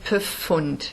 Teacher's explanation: you insert a schwa there. So it's kind of insertion of vowels. You break the clusters into their parts and kind of put a vowel in between them.